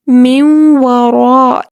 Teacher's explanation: جیسے لفظ ہے من ورائہم، اصل میں یہ لفظ ہے من ورائہم، لیکن ہم اسے پڑھ رہے ہیں من وراء، نون ساکن کو واو کے ساتھ ملا کر پڑھ رہے ہیں، مدغم کر کے پڑھ رہے ہیں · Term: ادغام